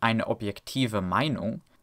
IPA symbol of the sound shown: v